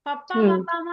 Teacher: తర్వాత తత్తా తద్దానా అన్నప్పుడు అవి దంత్యాలు. పప్పా పప్పామా అన్నప్పుడు అవి పెదాలు తగులుతాయి.